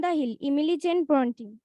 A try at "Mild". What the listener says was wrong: আচ্ছা, মিল্ড, এক মিনিট, ওটা হচ্ছে মাইল্ড।